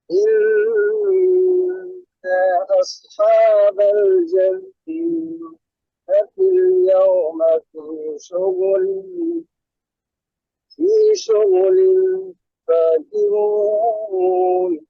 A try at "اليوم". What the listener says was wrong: আর একটা হচ্ছে এই যে ওয়াওটা হচ্ছে পাতলা হরফ, যেন ইয়াও না হয়, ইয়েউমা ইয়েউমা।